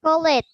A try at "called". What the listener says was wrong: Not call it. The same as finished, you say